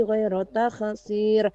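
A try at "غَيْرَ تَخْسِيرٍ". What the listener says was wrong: Ghairu terbaca ghoi. Kemudian takhsir terbaca takhsir. Ada seperti pantulan. Ya, dihilangkan pantulannya Ibu ya. Bukan ghairu takhsir. Hilangkan pantulan. Karena kha kita tahu dia bukan termasuk qalqalah.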